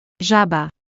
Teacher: Z with a dot above it sounds like the S in measure or pleasure, a buzzing voiced sound.